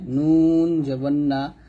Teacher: নুন জিহ্বার আগা তার বরাবর উপরের তালুর সঙ্গে লাগবে